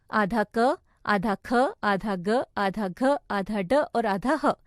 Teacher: मुंह के भीतर हवा के टकराने के स्थान के आधार पर व्यंजनों का वर्गीकरण इस प्रकार है: कंठ्य यानी गले से